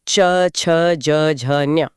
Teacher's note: टी यानी तालु, जो मुंह के छत का पिछला हिस्सा है। यहाँ से च वर्ग निकलता है।